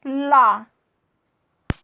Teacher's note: जो इसकी वायु है हमारे जिह्वा के पार्श्व से, मतलब पार्श्व का मतलब होता है बगल से गुजर जाती है, बगल से निकलती है, इसीलिए इसको पार्श्विक व्यंजन कहा गया है।